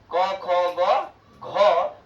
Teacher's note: क ख ग घ और विसर्ग और ह, ये कहां से निकलता है? तो ये हमारे कंठ के द्वारा निकलता है।